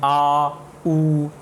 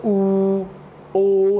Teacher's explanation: same चीज़ जब हम इनका उच्चारण करते हैं आ, उ, आपने देखा होगा बड़ा ऊ बोलेंगे तो ऊ, ओ, तो आप देखोगे जीभ के पीछे वाले हिस्से से हमें आवाज़ आती हुई प्रतीत हो रही है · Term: पश्च स्वर